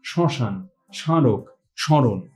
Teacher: উচ্চারিত হচ্ছে শব্দের গোড়ায় যখন ম ফলা উচ্চারিত হয় না সেটা আশ্রয়ী বর্ণটা সামান্য নাসিক্য প্রভাবিত হয়ে ওঠে